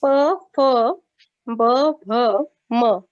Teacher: आपले दोन्ही ओठ जे आहे ते आपल्या एकमेकांना स्पर्श होत असतात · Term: ओष्ठव्य